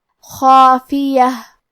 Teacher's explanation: تو کیونکہ اس کے پہلے حرف الخاء کا حکم ہے تفخیم تو ہم یہ دونوں حرف کو بھاری آواز میں پڑھیں گے۔ خافیہ، آخری میں تاء مدورہ ہے، ہم یہ کلمہ پہ رکیں گے تو اس پہ ہا سے رکیں گے۔